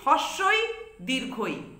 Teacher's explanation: তালব্য স্বর হচ্ছে হস্যই দীর্ঘই। এই দুটি স্বরধ্বনি বা স্বরবর্ণ উচ্চারণ করার সময় আমাদের জিহ্বার মধ্য আর তালুর মাঝখান থেকেই শ্বাসবায়ুটা বেরিয়ে আসছে, অর্থাৎ জিহ্বার মধ্য অংশ এবং তালুর মধ্যে হস্যই দীর্ঘই বর্ণ দুটি উচ্চারিত হচ্ছে বলে এদের তালব্য স্বর বলে চিহ্নিত করা হয়।